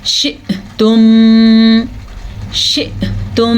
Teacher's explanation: حمزہ کے اوپر ساکن ہے تو ہلکا سا جھٹکا پیدا ہوگا